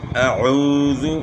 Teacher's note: حمزے کی آواز گلے کے آخر سے، عین کی آواز گلے کے درمیان سے ہے